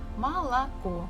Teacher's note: This is how we write it, but the stress falls at the last syllable, so the first two O's we must read or say as A.